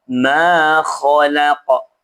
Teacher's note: Ma dibaca panjang dua harakat karena alif tidak boleh fathah. Setelahnya bukan hamzah atau sukun asli. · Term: mad asli